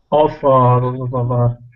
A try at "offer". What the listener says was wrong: So hold that R, push it down. So it's hard for you to maintain the R sound. It's offer.